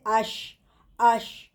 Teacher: زبان کے بیچ والے حصے کو اوپر کے تالو کے ساتھ لگانے سے نکلتا ہے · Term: شین